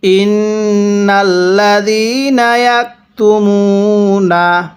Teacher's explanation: এরপরে ইয়াকতুমুনা, মিমের মধ্যে এক আলিফ, মিম ওয়াও পেশ, মু পেশের পরে ওয়াও সাকিন দেখলে এক আলিফ টেনে পড়বেন। তাহলে ইন্নাল্লাযীনা ইয়াকতুমুনা।